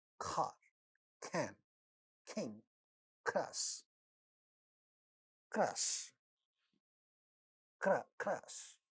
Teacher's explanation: ka at the initial position will also become aspirated